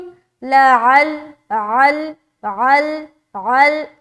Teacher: लअल्लहुम हलक के बीच के हिस्से से निकालेंगे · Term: आइन